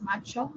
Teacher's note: En macho y en mayo, ambos son palatales